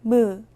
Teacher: 무는 입술을 붙였다 떼면서 내는 입술 소리로 영어의 M과 같은 소리입니다.